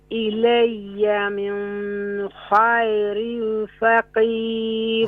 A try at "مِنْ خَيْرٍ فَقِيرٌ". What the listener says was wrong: ہاں من پہ نون ساکن پر غنہ نہیں ہوگا کیونکہ یہاں پر نون ساکن کے بعد حروف حلقی ہے تو یہاں پر من خیر فقیر